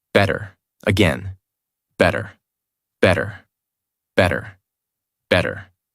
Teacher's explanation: In these words, the mouth does not stop strongly on the T. The tongue touches quickly and moves on. That is why it sounds softer. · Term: soft American T